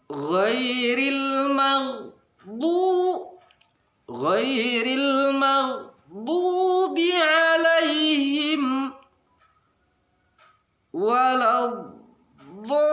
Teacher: ini adalah mad lazim harfi musaqqal, dia dibaca 6 ketukan